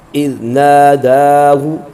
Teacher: یہاں پر ذال ہے سیدھی کے بغیر، اس میں زا کی آواز پیدا نہ ہو، اور ان کے ساتھ الف ہے، اس کو کھینچ کے پڑھیں گے، دال پر کھڑا زبر ہے تو دونوں کو برابر کھینچ کے پڑھیں گے۔